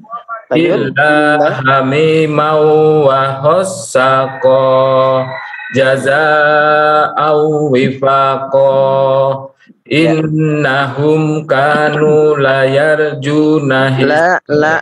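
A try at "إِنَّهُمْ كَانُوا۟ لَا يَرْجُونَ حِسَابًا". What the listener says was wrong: lamnya panjang. Innahum kanu la yarjuna. La yarjuna. Lamnya panjang. La yarjuna.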